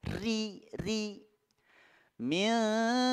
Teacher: rinya berharakat kasrah dia harus tipis tarqiq